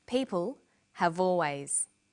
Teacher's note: notice how in conversation we link the final consonant sound V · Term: linking